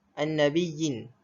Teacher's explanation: An-nabiyyin, ada dua huruf ya situ bertemu dalam satu kalimah. Cara bacaan mad tamkin ni pula dibaca dengan kadar 2 harakat sahaja ketika bacaan bersambung dengan huruf yang berikutnya.